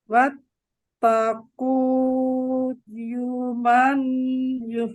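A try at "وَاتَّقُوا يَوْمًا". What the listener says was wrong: Yau. Bukan yu. Yau. Wattaqu yawman turja'una fihi ila Allah.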